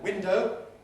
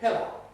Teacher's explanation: cockney weakens unstressed o to er in a way that doesn't happen in rp or other standard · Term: special weakening